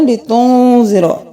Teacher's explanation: نون پہ اخفا کرنا ہے، لتنذر اظہار نہیں کرنا، لتنذر، ذا کو نرمی سے۔